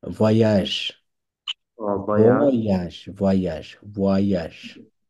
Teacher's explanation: এস এর উচ্চারণ নাই কারণ এটা প্লুরিয়াল, এস এর কোনো উচ্চারণ নাই।